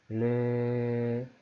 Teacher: 안 변하죠. 안 변하는 이유는 르 같은 경우는 목청을 울리는 소리가 그냥 입을 통해서 물 흐르듯이 흘러나온다 해서 유음인 거예요. 입을 통해서 나와요.